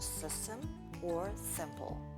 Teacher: the relaxed vowel i follows a sharp s like in system or simple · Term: s plus i pattern